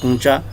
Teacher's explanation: کونچا بول رہے ہیں نون غنے کے ساتھ، حالانکہ یہ لفظ نون غنے کے ساتھ نہیں ہے صحیح اردو میں، سوچ بولتے ہیں، نون غنے کا اضافہ۔